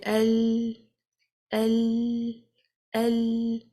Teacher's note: you can experience that the sound is coming from the side so this means the sound is not complete completely trapped it's